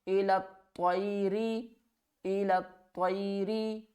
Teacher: را کے نیچے زیر ہوگی تو را کو باریک پڑھیں گے